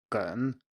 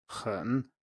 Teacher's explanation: 梗 and 很 are obviously very similar, and G and H, if you pronounce them, 梗, 很, are actually pronounced in the same place in the mouth, just with different manners of articulation